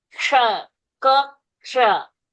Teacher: You start saying a k and then you say a sh. K sound has to be heard.